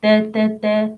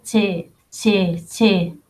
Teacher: the ta, tip of the tongue with the two top front incisors.